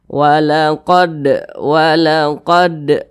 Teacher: Nah jadi huruf Qalqalah itu apabila dia sukun maka dipantulkan Nah karena huruf dalnya ini sukun maka bacanya dipantulkan